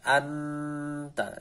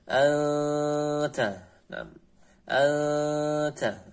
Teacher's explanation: Hukum ikhfa yaitu dia itu dibaca samar, nunnya dibaca samar dan didengungkan